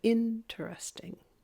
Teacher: the word interesting the in is the loud part